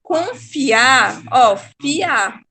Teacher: Quando a gente fala confiar, ó, fiar, fi e o a, ele se separa. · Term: hiato